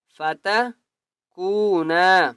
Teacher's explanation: قاف کو بھی ایک الف کی مقدار کھینچ کر پڑھیں گے اور نون کو بھی ایک الف کی مقدار کھینچ کر پڑھیں گے